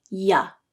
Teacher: the middle of the tongue comes up and the sides of the tongue touched the roof of the mouth the tongue is curved in a u-shape to allow the airflow